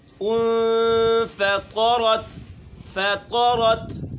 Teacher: فا ہے جو اس کا اپنا مخرج ہے کہ دانتوں کو ہونٹوں کے اندرون تری والے حصے پہ لگانا ہے، نہ زیادہ سختی سے اور نہ زیادہ نرمی سے، کہ بالکل اس طریقے سے ہوا نکلے منہ سے۔